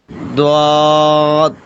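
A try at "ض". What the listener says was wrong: دیکھیے زواد کہنے میں دال کی آواز نہیں آنی چاہیے. زا سے موٹا ہو لیکن دال نہ نکلے. زود.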